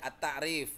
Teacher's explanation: alif lam yang bunyinya dihilangkan atau tidak diucapkan melainkan diidgamkan pada huruf berikutnya. Ya, dimasukkan alif lamnya enggak dibaca langsung kayak ini nih.